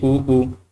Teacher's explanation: हमारा जो होंठ है वहाँ से उच्चारण हो रहा है